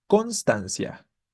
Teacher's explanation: Entonces vamos a hacer que suene fuerte en este caso la primera sílaba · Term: sílaba tónica